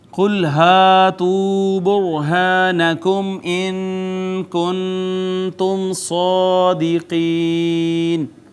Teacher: را ساکن ما قبل مضموم ہے، را مفخم پڑھی جائے گی